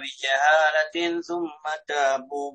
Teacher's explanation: التنوين بعد الثاء المثلثة إخفاء حقيقي